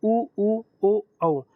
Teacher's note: वृत्ताकार में जिससे हमारा मुंह, जो ओठ होते हैं वो वृत्त आकार ले लेते हैं तो उसको हम वृत्ताकार बोलते हैं